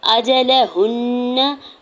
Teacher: अजलहुन्न, हमज़ा की ज़बर को, जीम की ज़बर को, लाम की ज़बर को बगैर खींचे हुए अदा करेंगे। हा के पेश को नून मुशद्दद के साथ मिलाते हुए नून मुशद्दद पे गुना करेंगे और ज़बर को बगैर खींचे हुए अदा करेंगे।